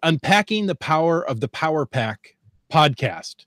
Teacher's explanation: that's a lot of plosive pees all in a row